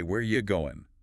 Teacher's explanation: The word are often disappears. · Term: auxiliary verb reduction